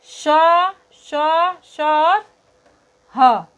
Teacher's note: जिन वर्णों का उच्चारण करते समय मुख से हवा निकलते समय गर्माहट पैदा होती है उन्हें उष्म व्यंजन कहते हैं।